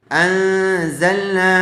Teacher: نون ساکن کے بعد حروف اخفا کے 15 حرفوں میں سے زا آیا ہوا ہے، اس لیے غننے کے ساتھ اخفا کر کے پڑھیں گے